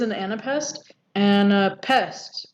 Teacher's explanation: it's unstressed, unstressed, stressed.